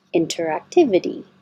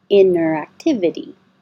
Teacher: if you say inner and you're pulling your tongue back for the r without releasing a burst of airflow it just disappears